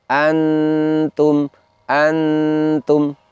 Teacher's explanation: di situ nun sukunnya bertemu dengan ta sehingga bunyi nun sukunnya itu terdengar samar. · karena nunnya terdengar samar, maka posisi ujung lidahnya tidak boleh berada di tempatnya nun. Di mana itu ujung lidah tidak boleh menempel di langit-langit atas bagian depan.